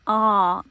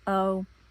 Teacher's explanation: O without the roof is ah. Open your whole mouth to say the word, the vowel, ah, and then O is more closed.